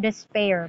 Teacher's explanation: under masculine rhyme why because we are considering the final stress so the word despair is stressed in the final syllable